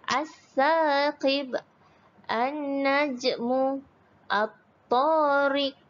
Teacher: huruf lam ditulis tetapi tak disebut. Kita tak baca alsa tak baca. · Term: alif lam syamsiah